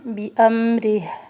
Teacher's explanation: با اور را دونوں کو باریک پڑھنا ہے